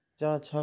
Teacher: चा छा का उच्चारण स्थान तालु है